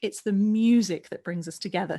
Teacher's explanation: So the emphasis we want to be on the word music.